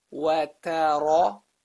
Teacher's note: Notice the movement from light letter to heavy letter back to light.